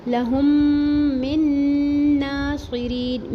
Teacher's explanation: میم کی زیر کو نون تشدید سے ملا کے پڑھیں گے اور غنہ کریں گے، ایک الف برابر ٹھہریں گے اور اس کا کھڑا زبر بھی ایک الف برابر پڑھیں گے.